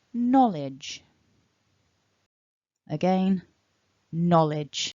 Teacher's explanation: remember stress the first syllable